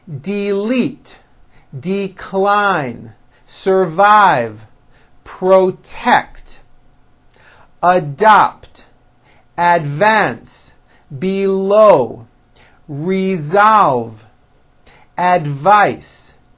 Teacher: here are a few two syllable words that are stressed on the second syllable